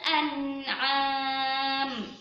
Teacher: an'am itu dijaga tidak dengung atau dibaca jelas